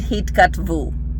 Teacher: it sounds like u at the end, and it's also going to be stressed